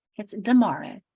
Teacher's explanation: So their first sound of tomorrow becomes D.